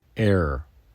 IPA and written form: ɛr (air)